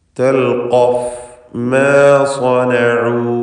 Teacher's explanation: സ്വനഉ എന്ന് പറയുമ്പോൾ സ്വാദിന് മാത്രമാണ് തഫ്ഖീം